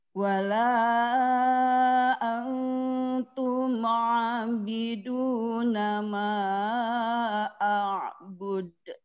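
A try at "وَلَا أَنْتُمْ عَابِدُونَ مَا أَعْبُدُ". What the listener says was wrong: Dibacanya tadi terlalu cepat. Abidum. Santai saja, dipanjangkan dulu 2 harokat. Wala antum abiduna.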